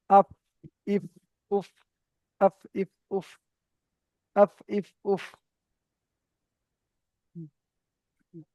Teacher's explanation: নিচের ঠোঁটের ভিজে অংশ এবং সামনের উপরে দুই দাঁতের আগার সাথে লাগিয়ে, সামনের উপরে দুই দাঁতের, তাহলে উপরে দুটো দাঁতের আগা, নিচের ঠোঁটের ভিজে অংশ লাগবে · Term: ফায়ের মাখরাজ